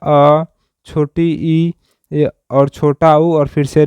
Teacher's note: इनको हम लोग लघु स्वर भी कहते हैं या फिर इन्हें एक मात्रिक स्वर भी कहते हैं, क्योंकि इनके उच्चारण स्थान में एक मात्रा का समय लगता है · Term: ह्रस्व स्वर